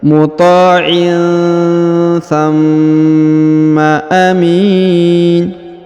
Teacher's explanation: Kemudian huruf ma ditahan dan ditekan 2 harokat ya, karena berharokat tasdid.